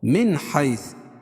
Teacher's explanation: من حیث اظہار حلقی, کیونکہ نون ساکن کے بعد حروف حلقی کے 6 حرفوں میں سے حا ہے